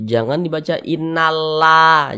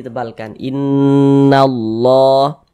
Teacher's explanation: Jadi huruf lam yang ini nih, lam jalalahnya ini dibaca tebal, dibaca tafkhim.